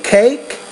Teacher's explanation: when the K is at the end the vowel is shorter